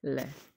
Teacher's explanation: जो प्राण वायु है वो बगल से, हमारे मुंह के जो बगल का हिस्सा है होठों का, उसके साइड से निकलती है, तो पार्श्विक व्यंजन है